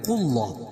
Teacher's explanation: اللہ کے لام سے پہلے زبر یا پیش ہو اللہ کا لام پور پڑھا جاتا ہے